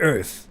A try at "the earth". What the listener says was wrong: The earth? Earth? Earth? Earth? あーって言うから悪いんかな。 Earth? The earth? The earth?